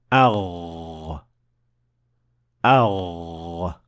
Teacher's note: the root of the tongue is raised to the point of almost connecting to the farthest area of the soft palate, producing the Ghain